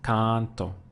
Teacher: I pushed down on the one before last